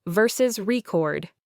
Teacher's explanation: Stress on the second syllable, verb, to save audio or video.